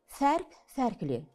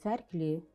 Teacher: fərq sözündəki sait incə olduğu üçün onu artırdığımız şəkilçidə incədir